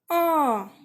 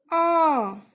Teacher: ये आ का उच्चारण हमारा मध्य स्वर है क्योंकि ये मध्य से निकलकर आ रहा है।